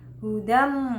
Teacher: Selanjutnya ada hukum bacaan hudam, itu idgham bigunah ya, karena tanwin bertemu huruf mim, jadi dibaca dimasukkan dengan mendengung